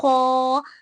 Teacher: सिफत इस्तिला की वजह से हम यहाँ पे खो को मोटा पढ़ रहे हैं